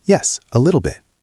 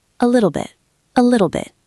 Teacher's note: The T is at the end. We usually don't explode it. We stop it.